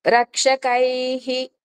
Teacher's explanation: ఐత్వం వస్తే రక్షకైహి అలాగా హి వస్తుంది